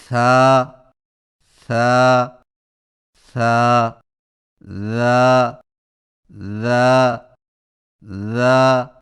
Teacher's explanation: زبان کی نوک کو سامنے والے اوپر کے دو دانتوں کے اندرونی کناروں سے نرمی سے لگا کر نرم اور بغیر سیٹی والی آواز میں پڑھیں